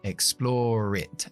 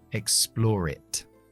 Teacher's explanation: Enlazamos la R de explore con la I.